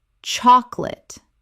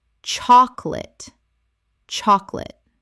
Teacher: Only 2 syllables in natural speech. The middle vowel disappears entirely.